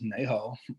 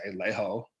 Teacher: a lot of words to start with n they'll use l instead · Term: swap the N with the L